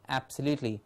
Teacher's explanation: just say creen and a small s before it to give us screen